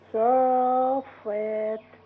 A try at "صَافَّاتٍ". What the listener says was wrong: كمان مرة كده بس نزود مد شوية.